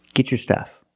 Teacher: If I separate, I can say get your stuff. But because I have a T before a Y making the Y sound, I can change the T to a ch sound like chicken and say get your stuff.